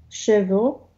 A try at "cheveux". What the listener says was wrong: Ага, еще раз cheveux. Да, cheveux, а то я услышала chevaux. Chevaux это уже лошадь. Да, а cheveux это все еще волосы.